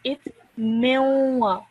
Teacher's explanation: you do not pronounce the actual noon. You actually produce just a nasal sound in your nose.